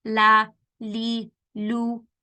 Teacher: the tip of the tongue along with the sides of the tongue touching the gums of the upper eight teeth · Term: Lam